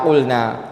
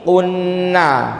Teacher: Idhar itu lamnya dibaca qulna. Kalau idgham itu kayak gini, qunna.